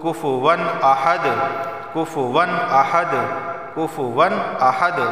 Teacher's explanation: قلقلہ ہوگا کیونکہ دال حروف قلقلہ میں سے ہے، اور یہاں تنوین کے بعد حمزہ آیا ہے اور حمزہ حروف حلقی میں سے ہے، تو صرف اظہار ہوگا، گنہ نہیں ہوگا۔